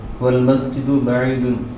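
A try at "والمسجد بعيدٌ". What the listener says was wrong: ہاں پورا اس کو کہیں تاکہ اس کا نا، کیونکہ آخری حرف جو ہے اس کی ساؤنڈ بڑی امپورٹنٹ ہے۔ والمسجد بعید،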